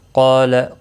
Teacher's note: قال قاف اور الف دونوں پر پڑے جائیں گے، قاف مستعلیہ ہے، الف مدہ بھی ہے، 1 الف کے برابر کھینچ کر بھی پڑھیں گے۔